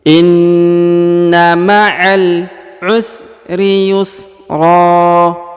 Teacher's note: Perhatikan huruf nun yang ditahan dan ditekan ya, terdapat tanda tasdid.